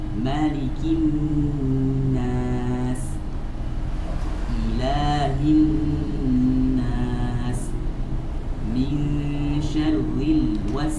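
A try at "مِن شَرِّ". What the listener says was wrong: Syarri. Ra. Mulai dari ra pertama langsung tipis. Syarri. Bukan tadi ra pertama ditebalkan kemudian ra berharokatnya ditipiskan. Itu tidak ya.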